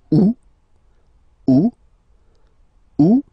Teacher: And then here two options because uh well two options are acceptable in French. The first one you don't pronounce the final t. Second one you pronounce it oot.